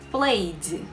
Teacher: o som vai ser só da letra D, com o E sendo mudo. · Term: som do D